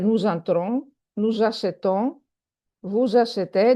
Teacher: Don't forget Z when we have a vowel after S. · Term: la liaison